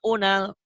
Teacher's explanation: Kenapa jadi pendek? Karena mad tabi'inya ketemu sukun. Ketemu alif lam qamariyah di situ.